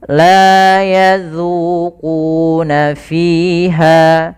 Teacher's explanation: Hati-hati di dalam hafal huruf zal, jangan sampai terbaca dengan la yazuku, padahal dia zal kecil. Jangan juga tebal, jangan la yazuzu tebal, tapi dia zu tipis.